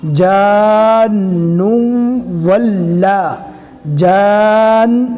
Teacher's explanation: نون کو واو سے ملائیں گے، اس لیے کہ واو کے اوپر بھی تشدید ہے